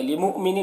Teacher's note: یہاں پر حمزہ ساکنہ ہے واو کی شکل میں، تو اسے جھٹکا لگا کر پڑھنا ہے